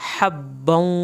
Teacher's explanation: ہا کو حلق سے پڑھنا ہے، با کی شد پڑھنی ہے